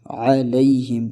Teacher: اور دوسری غلطی جو ہم اس آیت میں کرتے ہیں وہ ہم یہاں کرتے ہیں کہ اس کو بھی ہم علیہم پڑھتے ہیں، اس کو علیہم نہیں پڑھنا، اس کو ایک تو عین کو واضح کرنا ہے اس کی مخرج سے، دوسرا لے کو ہم نے لئی پڑھنا ہے